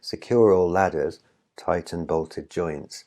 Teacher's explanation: there's a comma in the middle so there's a little bit of a pause so it's a bit like going up and down a hill